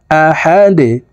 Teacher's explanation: দাল দুই পেশ দুন আহাদুন দালকে ওয়াকফুর ক্ষেত্রে সাকিন করে ফেলবো দাল যেহেতু কলগলার হরফ নিচের দিকে ধাবিত করে ধাক্কা দিয়ে উচ্চারণ করব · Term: কলকলার হরফ